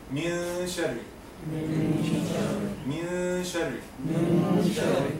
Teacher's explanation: So as if that you are not pronouncing a noon and saying only gunna.